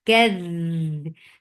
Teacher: Kadh, this rakhawa give dal a nice rakhawa, and rakhawa is flow of sound